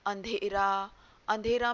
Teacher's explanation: अंधेरा में अ में अनुनासिक की ध्वनि सुनाई दे रही है।